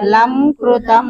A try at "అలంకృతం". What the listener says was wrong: అలంకృతం అని చదవాలి. అక్కడ విడగొట్టినప్పుడు లంకృతం అంటే అర్థం రాదండి. అక్కడ ఏంటంటే స్ఫురత్, వినండి, స్ఫురత్ కౌస్తుభం అలంకృతం, అక్కడ భాలంకృతం కలిపి చదివినప్పుడు అలంకృతం కంఠదేశే